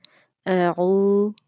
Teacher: واو مدہ کو 2 سیکنڈ لمبا کر کے پڑھا جاتا ہے۔ اعو، ذال کو نرمی سے پڑھیں گے اور اس کو نہ تو کھینچ کے لمبا کر کے پڑھیں گے اور نہ ہی جھٹکے سے پڑھیں گے، تو اس کی درست ادائیگی یہ ہوگی اعوذ اعوذ باللہ باللہ۔